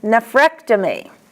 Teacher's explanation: An ectomy, the accent is on ek, as in nephrectomy.